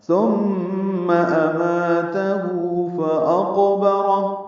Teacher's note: پیش ہے، مد صلہ، فاقبرہ حمزہ کو قاف سے ملانا ہے، قاف ساکن ہے، اس پہ قلقلہ ہے